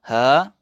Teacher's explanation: Bergetar peti suara sambil hembus nafas. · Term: huruf ha